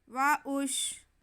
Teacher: واو پہ زبر، حمزہ پہ پیش اور شین ساکن، تو حمزہ کو ہم شین سے ملا لیں گے